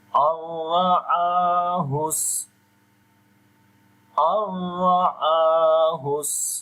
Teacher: And ra we read in heavy sound with fatha sign on it.